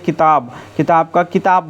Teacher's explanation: किताब तो इसमें ब जो है प ब जो है तीन में आता है और प जो है एक में आता है। तो घोषी वर्ण अघोषी वर्ण में बदल गया। इसको अघोषीकरण बोलते हैं।